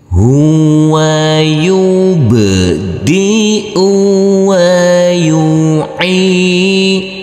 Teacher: huruf ba harus kita pantulkan karena di sini adalah bacaan qalqalah